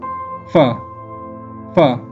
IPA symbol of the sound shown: f